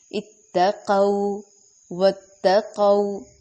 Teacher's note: اتقوا واتقوا تا کو ظاہر کریں گے اور قو پہ دوبارہ وولین ہو رہا ہے لو کی طرح، اور لمبا بھی نہیں کرنا، نرمی سے ادا کرنا ہے اور ہونٹ بھی مکمل گول کرنے ہیں واو کی ادائیگی کی وجہ سے